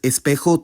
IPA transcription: esˈpexo